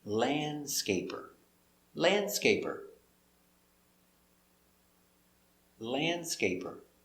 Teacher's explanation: so remember landscaper the d is silent